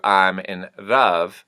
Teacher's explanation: the L becomes sort of almost like a trilled R. It's not a hard R.